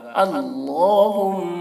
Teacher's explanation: میم میں تشدید ہے تو غنہ کر رہے ہیں